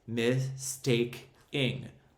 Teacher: According to this generalization, the addition of these two affixes, the prefix miss and the suffix ing, creates a total of 3 syllables, mistake-ing, 3 vowel sounds. Now, the accent falls on the root word, which is take.